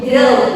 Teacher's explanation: kadang mahasiswa mengucapkan kata go itu menggunakan vokal o, padahal sebenarnya itu menggunakan diftong o ya. O. Jadi bukan go tapi go.